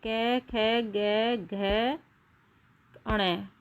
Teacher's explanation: जीभ का पिछला भाग को कोमल तालु को छूता है। इसलिए कुछ भाषा वैज्ञानिक कंठ व्यंजन को कोमल तालव्य व्यंजन कहते हैं।